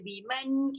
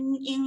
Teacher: Man tu tak dengung, in tu dengung. Sebab satu nun ada tanda mati, satu tak ada tanda mati.